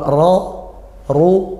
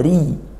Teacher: Kalau ra, ru, bacanya tafkhim tebal, pangkal lidah dinaikkan. Sedangkan kalau kasroh, ri, tipis, pangkal lidah sebaliknya diturunkan